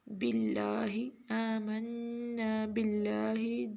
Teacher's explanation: लफ्ज़ अल्लाह से पहले क्या है, कसरा है, ज़ेर है, तो लिहाजा हम इसको क्या पढ़ेंगे, बिल्लाहि आमन्ना बिल्लाहि। जब लाम से पहले कसरा हो, लाम से पहले वाला हरूफ मकसूर हो तो हम फिर कायदा ये है कि लफ्ज़ अल्लाह को बारीक पढ़ा जाता है।